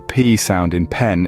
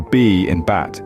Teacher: the P sound in pen is voiceless, while the B in bat is its voiced counterpart.